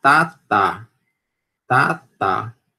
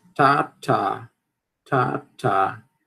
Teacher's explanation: o do português ele é dental